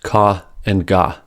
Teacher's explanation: Ka and ga are velar plosives since the sound happens at the velum, also called the soft palate. Ka is unvoiced and is the counterpart to the voiced ga.